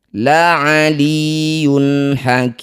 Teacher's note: Disebut bacaan namanya izhar halqi. Cara bacanya bunyi dumah tanwin. Yun. Baca dengan jelas tidak usah didengungkan.